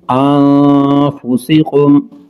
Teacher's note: نون ساکن کے بعد فا حروف اخفاء غنہ کر کے پڑھیں گے۔